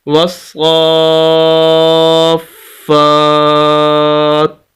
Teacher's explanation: وقف کرنا چاہیں تو یہ آخری حرف تا ہے، اس کو ساکن کر دیں گے تو وقف ہو جائے گا والصافات، یہ طریقہ ہوگا اس کے وقف کا۔